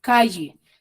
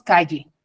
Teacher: ellos calle calle cierto como si estuviese escrito con la y en provincia nosotros decimos calle cierto entonces suena como si estuviese escrita con doble l